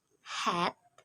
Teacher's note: the narrowing that produces the friction noise is between the vocal folds. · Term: glottal fricative